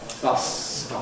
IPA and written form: ˈbʌsstɒp (bus stop)